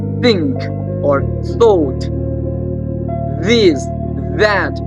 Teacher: The tip of the tongue will come between the upper teeth and the lower teeth. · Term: interdental